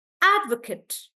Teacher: when I'm stressing on add this Kate becomes like cut